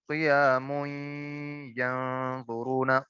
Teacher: قیامن کے اندر نون ساکن موجود ہے یعنی تنوین کے بعد یا ہے جو کہ حروف یرملون میں سے ہے, تو یہاں پہ ادغام بالغنہ ہوگا